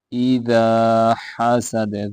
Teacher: دال حروف قلقلہ میں سے ہے، یہاں پہ قلقلہ ہوگا۔ اذا حسد، دال بھی پورا پڑھنا، اذا نہیں پڑھنا، اذا حسد۔